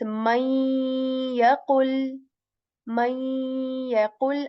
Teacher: So this means that the assimilation will be incomplete, which means that the sound of the noon sakin will be gone, but the nasal will remain · I'm assimilating meme into ya here, but keeping the nasal of noon by staying on the letter ya and making a nasal sound and saying may yaqul. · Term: Idgham with gunna, idgham with gunna